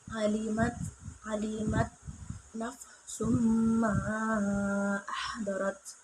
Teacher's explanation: idgham di gunah yaitu tanwin bertemu mim dibaca secara dengung